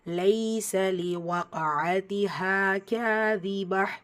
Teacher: ஸோ வக் காஃபில் சுக்கூன் வச்சிருக்கா. ஸோ கல்கலாவுடைய சட்டம் பயன்படுத்தி ஓதணும். கல்கலத்து சுக்ரா சிறிதாக அசைச்சு ஓதணும். வக் அதி ஹா ஹால அலிஃப் மத்தா 2 ஹரக்கத்தளவு நீட்டம் கொடுத்து ஓதணும்.